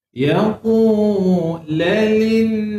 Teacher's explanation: Nun sabdu wajib dengung dua harakat.